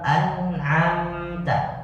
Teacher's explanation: ketika izhar tidak boleh dibacakan dengung, tapi dia harus tawasud nun dan mim, makanya satu harokat paling tidak